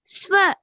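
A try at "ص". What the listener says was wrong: பிழை. ச என்ற பிழை. ஏன் பிழை? இந்த எழுத்து வானத்தை நோக்கி போகணும். ஸ்வா. ச அல்ல அது ஸ்வா. ச என்று சொல்லதுக்கும் ஸ்வா என்று சொல்லதுக்கும் இடையில வித்தியாசம் இல்லையா? வித்தியாசம் இருக்கிறது.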